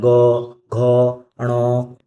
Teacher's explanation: जैसे गौ बोलेंगे तो आप गले में, कंठ में वाइब्रेशन आएगा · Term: सघोष